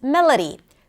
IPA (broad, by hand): melədy